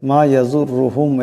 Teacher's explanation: মা ইয়াজুরুহুম এখানে রার উপর পেশ আছে, আওয়াজটাকে মোটা করিয়া পড়তে হবে।